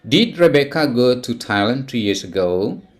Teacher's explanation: It is rising intonation at the end of the sentence.